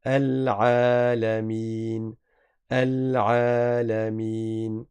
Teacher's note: Vous voyez le petit bâton suspendu, c'est un alif, il est obligatoire de le prononcer. Donc, on prolonge la lettre Ain.